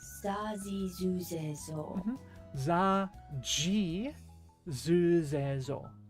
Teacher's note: Your voice isn't vibrating. But if you make that a z sound, if s becomes z, you're buzzing. So that's a voiced sound.